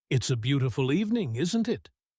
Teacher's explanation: With real curiosity, letting isn't it climb upward, like you genuinely want to know what she thinks. Then say the same sentence again, but this time let isn't it fall, calm and certain, like you're simply sharing an opinion you're confident she'll agree with. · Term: rising tag